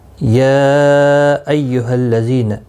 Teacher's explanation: یا مد منفصل ہے، 3 الف کی مقدار کے برابر کھینچ کر پڑھیں گے۔